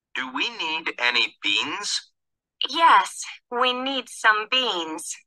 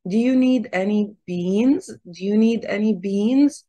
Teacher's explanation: القوة هنا في الجملة دي على كلمة beans فهتلاقي الصوت بيرتفع فيها وبيطولوها شوية في النطق